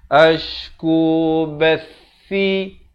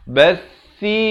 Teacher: Bath di hujung lidah itu mesti keluar di antara dua gigi. Bathi 2 harakat.